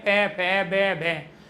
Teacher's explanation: जब हम पै फै भ कहते हैं तो हमारे होठ बंद हो रहे हैं खुल रहे हैं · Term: ओष्ठ